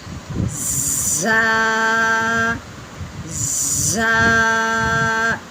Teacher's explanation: زا جو ہے یہ سختی والا ہے، سٹی والی آواز نکلے گی اس کی۔